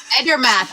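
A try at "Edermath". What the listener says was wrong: It's not. It can't be Ender. There's no N.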